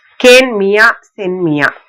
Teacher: இந்த இகரம் வந்து ஒரு மாத்திரையா ஒளிக்காம அரை மாத்திரை அளவினதாதான் ஒளிக்கும். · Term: குற்றியலிகரம்